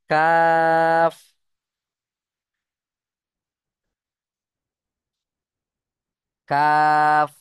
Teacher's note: জিভের গোড়া হতে একটু আগে এসে তার বরাবর উপরের তালুর সাথে লাগিয়ে উচ্চারণ হয় কাফ। এই যে জিভ ধরুন, আর উপরের তালু, আর তার মাঝখান বরাবর দেখেন, এই যে মাঝখান বরাবর জিভটা এইভাবে গিয়ে মিশবে।